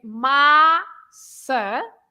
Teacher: you open the first A. You say massa, and you stress the first part